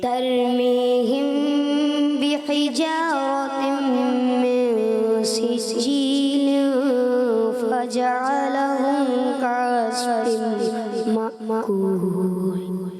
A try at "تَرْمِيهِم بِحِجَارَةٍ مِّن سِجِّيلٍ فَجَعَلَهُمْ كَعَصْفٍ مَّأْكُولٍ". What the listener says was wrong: بیچ میں سانس ٹوٹ گئی کوشش کریں پوری ایک سانس میں پڑھیں دونوں آیت کوشش کریں عبید